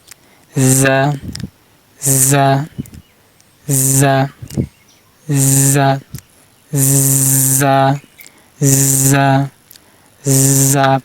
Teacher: যার মাকরাজ জিহ্বার আগার সামনে নিচে 2 দাঁতের আগার সাথে লাগে